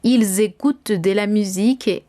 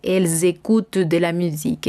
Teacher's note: tendremos la unión de la S con la vocal. Entonces, esta unión es obligatoria.